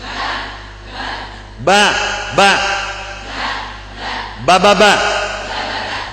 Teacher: Berarti di kedua bi suaranya tertahan. Nafas pun tidak ada keluar juga. Hati-hati. Jadi ba tidak boleh dibaca dengan ba.